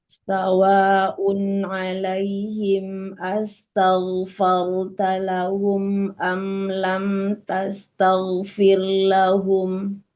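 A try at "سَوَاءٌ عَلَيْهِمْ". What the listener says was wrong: Ya, sawa. Panjangin, Mi.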